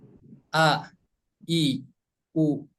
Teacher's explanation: huruf hamzah itu tempat keluarnya dari aqsal halki ya, atau pangkal tenggorokan. Maaf ya, ini tenggorokan yang paling bawah ini adalah aqsal halki.